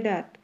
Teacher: নাসিক্য ধ্বনি নবভারতীয় ভাষায় সেটি লুপ্ত হয়ে পূর্ববর্তী স্বরধ্বনিকে সানুনাসিক ধ্বনিতে পরিণত করেছে যেমন সংস্কৃত দন্ত প্রাকৃতদন্ত বাংলায় দাঁত সংস্কৃত দন্ত প্রাকৃতদন্ত বিহারী বিহারী